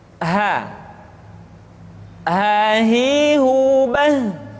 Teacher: Selanjutnya huruf ha dikeluarkan dari tenggorokan yang terjauh, sama seperti kita mengucapkan huruf a.